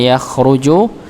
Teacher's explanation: kha-nya sekali lagi ditebalkan, tetap walaupun dia dalam keadaan sukun tetap ditebalkan. Yakhruju tanpa berlebihan.